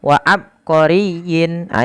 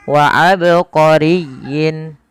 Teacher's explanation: Qalqalah artinya memantul. Maka tatkala kita membaca ba di sini harus dipantulkan. Kesalahan yang terjadi adalah tidak memantulkan huruf ba.